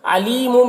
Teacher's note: یہاں پر یا مدہ ہے، اسے ایک الف کے برابر کھینچیں گے